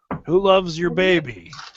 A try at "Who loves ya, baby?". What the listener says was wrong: No, ya. Y-A, ya. Who loves ya, baby? Like, who loves you, baby, but ya, because that's how he said it.